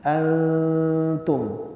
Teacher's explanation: jangan dibaca izhar ya wala Antum lah wala Antum tapi disamarkan ikhfa itu menyamarkan jadi nunnya jangan dijelaskan tapi disamarkan